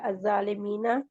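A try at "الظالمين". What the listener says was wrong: जालिमीन नहीं, ज़ालिमीन, ज़ालिमीन।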